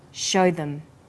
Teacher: show is stressed and them is unstressed so we say show them this is vowel and consonant linking